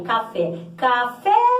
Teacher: O fé é tônico, então o fé aí, o E um E vogal tônica. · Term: sílaba tônica